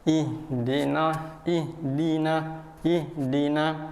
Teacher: ih harus di tenggorokan dibagian bawahnya